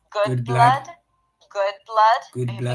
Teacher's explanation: The good has that back open as in book, cook, and look. And the blood has a cup sound. Good blood, good blood.